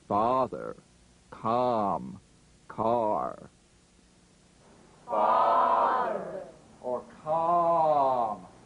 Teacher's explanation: the largest stretch opening is called number five ah as in father or calm